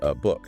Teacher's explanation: A reduces almost always to uh.